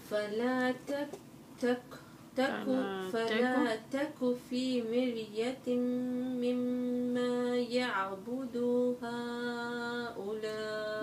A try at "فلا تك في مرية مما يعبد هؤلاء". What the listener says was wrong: لا تمد الدال. يعبد هؤلاء. مد هؤلاء أربعة. هؤلاء. هؤلاء.